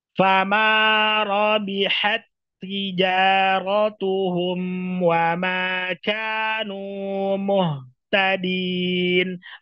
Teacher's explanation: maka huruf pertama dimasukkan ke huruf kedua dibaca tanpa gunah